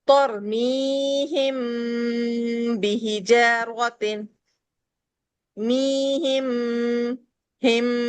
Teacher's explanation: ہم میم کے ساؤنڈ کو روکتے ہیں اور ہونٹوں میں ایک وائبریشن سی فیل ہو رہی ہوتی ہے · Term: اخفاء شفوی